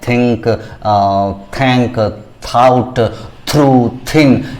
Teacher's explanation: हमारा टंग हमारा जीभ दोनों दांतों के फ्रंट टीथ के बीच में आता है और टिप ऑफ द टंग खास करके थोड़ा सा बाहर भी रहता है दांत से और वहां पर हवा को रोक झटके में हम ध्वनि को उत्पन्न करते हैं।